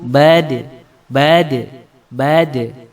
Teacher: huruf Qalqalah ini kalau kita membaca ketika disukun itu suaranya memantul